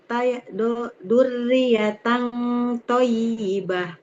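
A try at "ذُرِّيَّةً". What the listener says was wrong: Enggak boleh zu. Jadi huruf zal tidak seperti dal. Ujung lidahnya, Bu, tempelkan ke ujung gigi seri yang atas. Zu. Nah, zurriyatan thayyibah.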